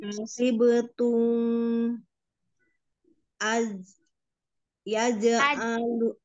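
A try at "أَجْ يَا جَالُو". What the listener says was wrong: jangan angkat alifnya, jangan a, aj, langsung dipukunin ke jim, ya jalu, jauh, ya jalu, ya jalu,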